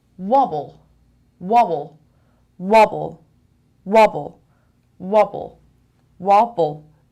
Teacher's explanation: 2 syllables and the stress is on the first syllable.